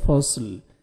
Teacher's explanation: صاد کو موٹا کر کے پڑھیں گے اور لام ساکن ہو جائے گا